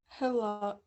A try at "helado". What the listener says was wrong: Yeah, el helado, right? That H is silent. El helado.